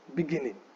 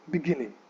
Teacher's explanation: it is the second syllable that gets the stress